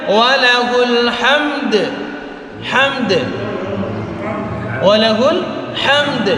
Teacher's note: Kan ada mim mati tapi Oke, makanya mim mati tetap kita baca, begitu juga huruf dal. Dan huruf dalnya karena dia meskipun dia mati tetap kita keluarkan qalqalahnya. Malah dia kan di akhir kalimat.